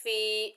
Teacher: فا کے نیچے زیر، آگے یا ساکن ہے، یہ یا مدہ ہے، ایک الف کی مقدار کھینچ کر پڑھیں گے